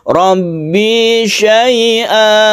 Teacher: Maksudnya adalah tanwin ini sudah diganti menjadi mad sehingga membacanya bukan an tapi a yang dipanjangkan 1 alif. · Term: mad iwad